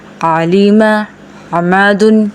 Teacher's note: درمیانی حلق سے عین، ح جگہ گلے کے بیچ والا حصہ